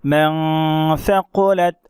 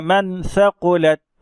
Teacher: اسی طرح یہاں دیکھیں آپ، من ثقلت، تو نون ساکن کے بعد حرف اخفا کے میں سے ثا آ رہا ہے، تو ثا آیا، ہم نے یہاں پر اخفا کیا، ناک میں تھوڑی دیر آواز کو ہم نے روکے رکھا